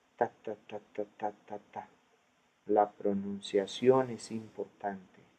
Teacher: There's no reduced vowels. All the vowels are pronounced almost with the same length.